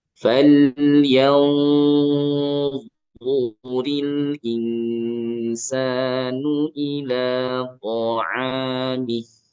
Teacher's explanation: ikhfanya tebalkan ujung lidahnya ke arah huruf dha, bunyi arahkan ke sana tapi juga diangkat pangkal lidah karena huruf dha huruf tebal maka ikhfanya samanya sama tebal.